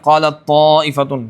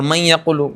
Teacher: قالت طائفۃ، گنہ نہیں ہوگا، اور من یقول گنہ ہو رہا ہے